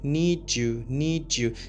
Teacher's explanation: when we have D plus Y, we pronounce it like G